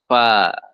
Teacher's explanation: Nah, bibir ini ada dua jenis ya, ada dua model. Pertama, bibir ya, yang bawah jumpa dengan gigi seri yang atas itu menghasilkan satu huruf yaitu fa. Fa ada udaranya. Fa. Nah, satu huruf.